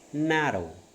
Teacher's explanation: but you are stopping the air with raising your tongue yeah your front of the tongue is raised and touching the alveolar ridge